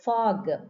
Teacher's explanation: the sound of O is aw. This is a monophthong, aw sound.